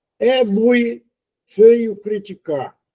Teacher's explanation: Supressão de uma sílaba no final. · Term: apócope